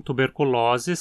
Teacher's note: Aqui o O na penúltima sílaba é longo. Sempre que você encontrar a terminação osis se referindo a doenças, o O vai ser longo e a palavra paroxítona.